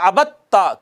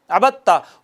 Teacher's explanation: عبد تا میں دال اور تا دونوں حروف نطعیہ میں سے ہیں، ایک ہی جگہ سے ادا ہوتے ہیں مگر اکٹھے آئے ہیں، پہلا ساکن ہے دوسرا متحرک ہے تو پہلے کو دوسرے میں ضم کر دیں گے اور ہو جائے گا عبدتا۔ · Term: متجانسین